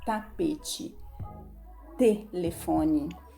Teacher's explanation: A ponta da língua vai lá no palato. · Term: letra T